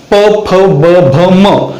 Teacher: प, फ, ब, भ, म यांचा उच्चार करत असताना दोनही ओठ एकमेकांना स्पर्श करत आहेत , आणि स्पर्श जर नाही केला त्यांचा उच्चार होऊ शकत नाही, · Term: ओष्ठ व्यंजन